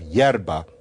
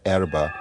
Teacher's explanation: Spanish and Romanian do funny stuff with the vowels. And so in Spanish, the e has become a ye. And so you have yerba instead of the erba of Italian.